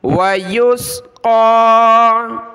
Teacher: ایک الف کی مقدار قاف کو اوپر کی طرف ہم کھینچیں گے